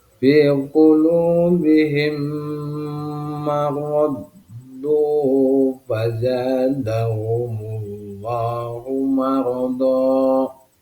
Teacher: Cara membacanya adalah memasukkan huruf mim ke dalam huruf mim disertai dengan suara gunnah sekitar 2 harokat atau 2 ketukan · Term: idgham mutamassilain